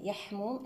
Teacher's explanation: صفات الحاء رخوة، مستفلة، مهموسة، منفتحة، مسمطة.